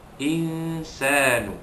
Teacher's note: Ayat yang ketiga, wa qala al insanu ma laha, qala qalif atas qomat asli, al insanu al alif lam qamariyah alif lam sukun, insanu nun mati jumpa sin, hukum dia ifa hakiki, yakni menyembunyikan bunyi nun mati yang bertemu dengan huruf sin